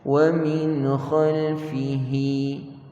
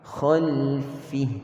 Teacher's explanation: Mad silah yakni mad yang berlaku ketika sambung bacaan. Jika kita berhenti tidak ada panjang tersebut. Khalfi cukup.